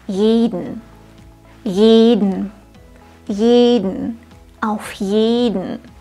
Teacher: So, dann lass uns mal die Aussprache üben. Achte bitte darauf, dass der erste Vokal bei jeden lang ist.